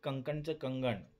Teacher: क हा कठोर ध्वनी ग या मृदू ध्वनीत बदलला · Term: घोषीकरण